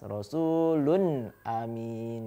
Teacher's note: Ketika dhammahtain bertemu dengan hamzah, maka dhammahtainnya, unnya harus dibaca jelas atau suara huruf n-nya dibaca jelas.